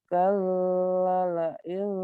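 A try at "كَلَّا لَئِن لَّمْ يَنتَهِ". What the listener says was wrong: Kalla panjang.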